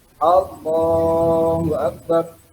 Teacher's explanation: Jadi Allah, lo-nya yang dipanjang.